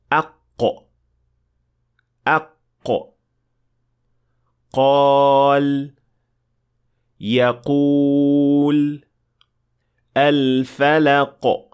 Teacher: the deepest part of the tongue makes contact with the soft palate so there is touching between the tongue and the soft palate